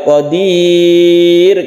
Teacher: Kita panjangkan juga qadir karena ada sukun ro, sebelumnya ada kasrah, maka dibaca tipis.